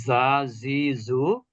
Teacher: জিহ্বার আগা নিচের দাঁতের গোড়া থেকে তিনটি অক্ষর উচ্চারিত হয়।